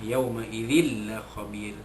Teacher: Idzin la, jadi masuk itu sempurna. Dia tak ada dengung. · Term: idgham bila gunnah